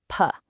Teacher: Your lips press together for a split second, and then they release. It's a definite physical thing.